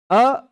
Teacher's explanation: अ बोलने पर सीधे-सीधे कंठ से हवा आती है।